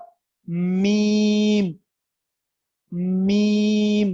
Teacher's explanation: जब दोनों होंठों के खुश्की वाले हिस्से आपस में मिल जाए